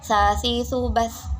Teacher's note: sa ini tempat keluarnya adalah di ujung lidah dan juga gigi sebelah atas dan bawah. Jadi seperti seakan-akan kita itu menggigit lidah kita, tapi jika akan seakan-akan, bukan seperti menggigit.